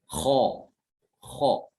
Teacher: Jadi ketika diucapkan pangkal lidahnya itu naik ke atas ya ke langit mulut. Itu yang dinamakan dengan al-isti'la.